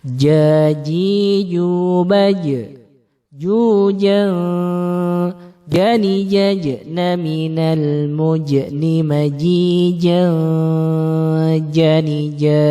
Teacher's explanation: jim itu syiddah, penekanannya kuat, kemudian jahar. Dia tidak keluar nafas ketika membacanya. Berbeda dengan huruf C yang cenderung ringan dan juga kalau membaca ada desis suaranya. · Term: huruf jim